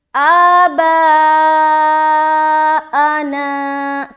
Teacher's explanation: با میں کھینچ رہے، آ میں بالکل جلدی چھوڑیں گے اور نا میں کھینچیں گے